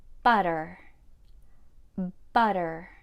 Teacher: the second feature of North American pronunciation is the flap t the flap T is a unique way of pronouncing the letter T which sounds more like a soft d